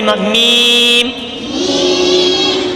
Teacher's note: میم دونوں ہونٹوں کے خشک حصے سے ادا ہوتے ہیں۔ میم، یہ خشک حصے جو باہر والے ہیں نا، یہ آپس میں لگتے ہیں تو میم، میم۔